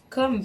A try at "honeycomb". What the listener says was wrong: Tu prononces pas le B.